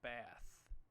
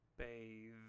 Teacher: The word bathe uses the pronunciation of the digraph TH called a voiced sound. This is a sound where we use our vocal cords to produce the sound.